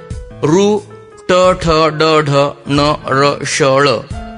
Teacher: यांचा उच्चार कंठाच्या अलीकडे मूर्धेवरती होतो, म्हणून या वर्णांना मूर्धन्य वर्ण असे म्हणतात